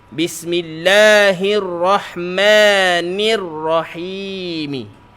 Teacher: Hamzah wasal tak dibaca, lam tak dibaca, terus masuk pada ra.